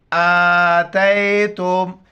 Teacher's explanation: حمزہ کڑا زبر ا، تا یا زبر تے، تا میم پیش تم، آتیتم. کڑا زبر ہے، ایک الف مقدار اوپر کھینچنا ہے